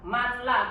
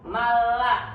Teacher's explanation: dibacanya tidak dengung tapi sama-sama idgham sama-sama nun-nya itu dimasukkan tidak dibaca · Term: idgham bilagunnah